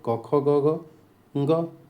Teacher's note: क वर्ग का उच्चारण कंठ से होता है।